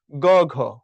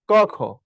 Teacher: গ ঘ বলতেছি, তখন দেখবা আমার ভোকালটা কিছুটা লাউড, কিছুটা স্ট্রং, একটু পরিবর্তিত হচ্ছে। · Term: ঘোষ